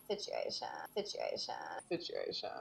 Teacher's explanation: a particular sound that's created by a loose glottal closure when you lower the pitch of your voice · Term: vocal fry